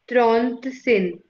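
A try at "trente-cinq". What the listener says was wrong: सिन नहीं होगा, सैंक, सैंक, त्रॉन्त सैंक।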